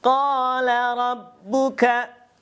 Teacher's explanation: Nah, di sana ada qala, yaitu mad aslinya ya. Karena ada fathah bertemu dengan alif, tentunya dibacanya 2 harokat saja.